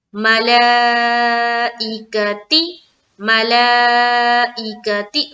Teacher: मला में भी मद है तो यहाँ पर हमें स्ट्रेच करना है 3 से 4 अलीफ की मकदार के बकदर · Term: मद्दे मुत्तसिल